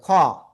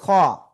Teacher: এক আলিফ টান হবে, খ, মোটা আওয়াজে খ